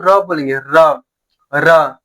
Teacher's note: जीभ क्या हो रहा है? कंपन कर रहा है। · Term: लुंठित या प्रकंपित व्यंजन